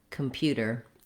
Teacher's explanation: So the word computer has the stress on the second syllable pew, and letter U in this word says two sounds. It has the y and the u sound, just like in the word you.